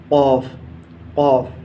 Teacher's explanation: ऐसे ही अब नंबर आता है बड़े क़ाफ़ का। ये जो बड़ा क़ाफ़ है इसका मखरज जो है ज़बान की जड़ और ऊपर का तालु